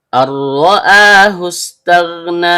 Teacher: Dimulai dengan hamzah dalam bentuk alif atau hamzah qat' yang keluar dari bagian bawah tenggorokan . Nun, ujung lidah bertemu dengan bagian tengah langit-langit mulut. · Karena nunnya sukun, bertemu dengan huruf ro yang keluar dari ujung lidah bertemu dengan langit-langit bagian belakang, maka terjadi hukum bacaan idgham bila gunnah. Bunyi nun sukunnya dilebur ke huruf ro tanpa dengung. Kemudian ro yang berharokat fathah, maka hukum bacaannya tebal atau tabkhim.